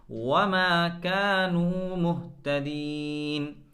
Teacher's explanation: वमा कानू, बल्कि वाव का मखरज क्या है कि दोनों होठों को गोल करके वाव पढ़ा जाता है।